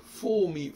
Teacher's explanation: les Anglais ne prononcent quasiment pas le R final. Ils vont dire for me, en le R, il est quasiment inaudible.